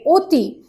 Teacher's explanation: অ স্থানে ও এর উচ্চারণ হচ্ছে